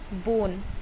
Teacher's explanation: बोन में हम बो को देर तक कह रहे हैं, ना को जल्दी बोलते हैं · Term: long vowel sound of O